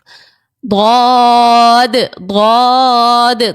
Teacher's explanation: ضاد جو ہے یہ حرف مستعلیہ کا ہے، موٹا پڑھا جانے والا حرف ہے، اس کو ہم نے موٹا پڑھنا ہے.